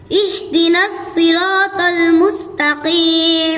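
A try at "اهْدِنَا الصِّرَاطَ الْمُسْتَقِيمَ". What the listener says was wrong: এখানে ছোট হা স্পষ্ট উচ্চারণ হবে। ইহদিনাস সিরাতাল মুস্তাকিম।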